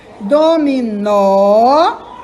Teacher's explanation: O nó é mais forte.